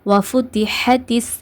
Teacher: இந்த ஹாவை உச்சரிக்கும் போது காற்றை வெளிப்படுத்தி உச்சரிங்க. வஃபுதிஹத்திஸ் இந்த மாதிரி காற்றை வெளிப்படுத்தி உச்சரிக்கணும்.